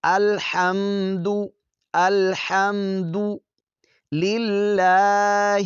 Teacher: لام جو لفظ اللہ کا ہے یہاں پر باریک پڑھا جائے گا، کیونکہ لفظ اللہ کے لام سے پہلے جو ہے وہ زیر ہے، تو یہاں پر باریک پڑھیں گے۔